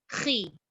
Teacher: Baris bawah jangan kuat sangat jadi khi. Dia hanya sebut sampai senyum je.